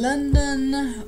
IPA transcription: ˈlʌndən